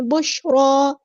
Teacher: بشرا نہیں پڑھنا، شین ساکن کو لانی ہے. بشرا، را ہمارا یہاں پہ ہیوی ہے، پورا ادا کریں گے، موٹا ادا کریں گے